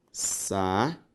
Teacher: Perceba que a sílaba tônica também é a penúltima, ou seja, uma palavra paroxítona.